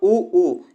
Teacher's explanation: ओष्ठ की बात किया तो देखिएगा उ ऊ यहां पे छोटा उ और बड़ा उ जो है हमारे ओष्ठ से उच्चारण होते हैं